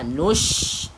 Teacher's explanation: Kedudukan huruf shin iaitu di kawasan tengah lidah. Nush. Tebalkan sebutan dia.